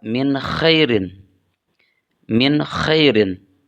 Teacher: ada nun mati kemudian diikuti oleh huruf kha sehingga dibacanya jelas atau idhar